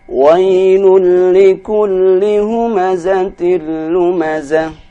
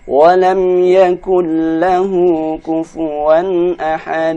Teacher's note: kufuwan Ahad Yakul lahu ini ada huruf nun tanpa sukun tapi karena bertemu dengan huruf lam maka tidak dibaca dengung dia dibaca dengan cepat